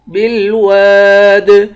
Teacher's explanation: الف کی مقدار کھینچ کر پڑھیں گے، الف حروف مدہ ہے، آخر میں دال ہے، دال پر قلقلہ ہوگا